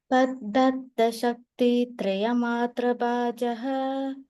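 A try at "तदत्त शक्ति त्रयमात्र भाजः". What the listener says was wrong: சோ பாஜஸ் இருக்கு இல்லையா, இஸ் அடிச்சுட்டு விசர்க்கம் போட்டுக்கோங்க.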